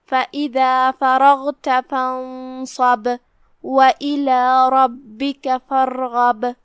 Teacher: حرف البا ہے اور اس پہ تشدید ہے، لہذا 2 حرف کے مقدار میں با کو ادا کرنا ہے اور تشدید کو ظاہر کرنا ہے